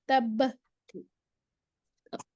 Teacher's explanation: تب با کلکلا، با باؤنسنگ ساؤنڈ دے دیں